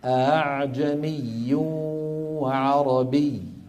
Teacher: فيلف القارئ بين الهمزه المحققه والالف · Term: الهمزه المسهله